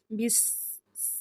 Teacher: اب بس میں صاد کی ساؤنڈ نہ آئے، سین کو کلیئر ادا کریں، بس، یہ والی ساؤنڈ آئے، بسم اللہ۔